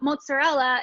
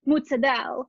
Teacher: the r's become kind of like the d and then the vowels drop off of the end of the word